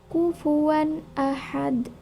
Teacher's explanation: bacaan kufuwan Ahad Nah di sini pada lafaz kufuan Ahad itu ada tanwin bertemu dengan alif maka tidak boleh e dibaca dengung harus dibaca secara jelas atau terang · mengeluarkan lafal atau suara dari tenggorokan dan dibaca dengan jelas atau tanpa dengung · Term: izhar halq